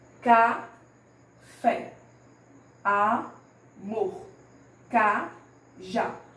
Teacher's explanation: Observe que a palavra que eu pronuncio com mais intensidade é a última sílaba. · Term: oxítonas